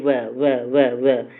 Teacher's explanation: जब आप वह बोलेंगे तो ऊपर वाला जो दांत है नीचे वाले होठ से टच होगा। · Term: दंतोष्ठ